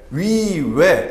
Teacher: 좀 취하고 있죠 그런데 위 외 이런 식으로 위의 이렇게 발음하면 지금 입술의 모양이 동그란 어떤 형태를 취하고 있습니다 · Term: 원순